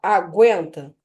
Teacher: eu tenho um ditongo crescente nasal